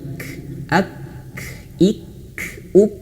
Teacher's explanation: Kaf cara bacanya ketika dia sukun tertahan dulu suaranya dan mengalir anginnya. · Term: Kaf yang sukun, kaf yang sukun